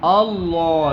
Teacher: لام موٹا ہوگا، ٹھیک ہے. اللہ، جتنا اس کو موٹا پڑھو گے بیٹا اتنا خوبصورت لگے گا.